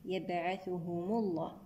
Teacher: هنا لام لفظ الجلالة مفخمة لأن سبقها ضم